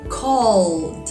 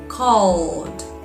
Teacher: Call, L vibrates in your throat. So the D should sound like D.